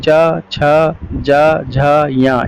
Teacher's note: इनका उच्चारण स्थान तालु है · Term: च वर्ग